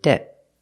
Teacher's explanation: we make a stop te debt debt we don't say debt usually we don't release the T at the end